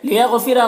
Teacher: गैन को पुर पढ़ेंगे, हुरूफ मुस्तालिया में से है और रौ को पुर पढ़ेंगे।